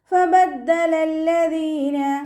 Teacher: നമ്മുടെ മേലെ മുൻപല്ലിൻ്റെ അറ്റം താഴെ ചുണ്ടിൻ്റെ ഉൾവശത്ത് നനഞ്ഞ ഭാഗത്ത് വെച്ചിട്ട് ഉച്ചരിക്കുക കേട്ടോ. ലൈറ്റാക്കി കൊടുക്കുക.